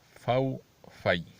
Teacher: فو فی، فو فے نہیں، کیونکہ یہ مجہول ہے، مجہول پڑھنا جائز نہیں ہے، بلکہ فو فی۔